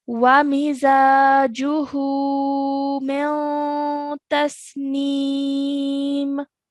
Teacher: So because it's not a letter of the throat, we can spend 2 seconds on this noon sakin with a partial nasal sound